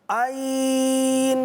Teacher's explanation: آئین نون پر جیسے آپ پہنچیں گے تب جا کر آپ نے گنہ کے لیے ناک میں آواز لے کر جانی ہے